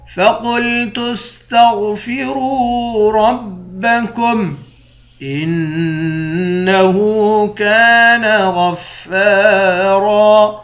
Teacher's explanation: نون مشدد پر غنہ کریں گے۔